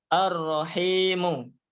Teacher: Alif lamnya hilang masuk ke huruf Dal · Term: Syamsiah